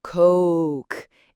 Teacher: It's a longer, rounder sound, that O sound. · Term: O diphthong sound